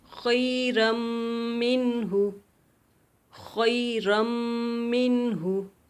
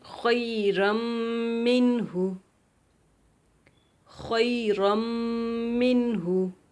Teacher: را کو میم میں داخل کرنا ہے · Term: ادغام